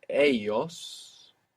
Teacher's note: this L-L in most Spanish dialects makes a Y sound.